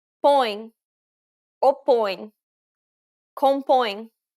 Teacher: But remember, you need to emphasize the nasality of the vowel, so make sure you're pronouncing it through the nose. This is a closed O sound, so don't open your mouth too widely.